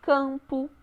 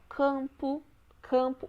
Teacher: o m quase não sai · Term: as nasais